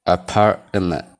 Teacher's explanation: Garuu amma tiin kun perfectly hin dubbifamtu. Tiin dhumaa kun akka nama hin dubbifnetti held t jedhamti.